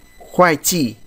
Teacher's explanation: Chúng ta đọc nhanh bởi vì nó có hai thanh bốn đi cùng với nhau, thì cái thanh thứ nhất chúng ta đọc hơi nhanh một chút